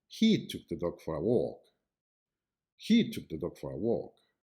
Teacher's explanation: the main emphasis is on the word he as it is new information to the listener